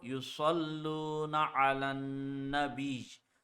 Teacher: When ya has a tashdid, we produce the G sound.